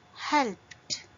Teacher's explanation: P is a voiceless sound, so it will end with t sound.